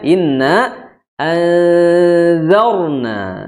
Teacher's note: Dia berhukumnya istifal atau lidahnya di bawah huruf dzal.